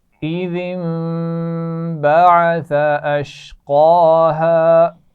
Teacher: اس کے بعد ہے آسان لفظ ہے اشقاہا, قاف کو موٹا بھی پڑھیں گے اور کھڑا زبر ہے تو کھینچ کر بھی پڑھا جائے گا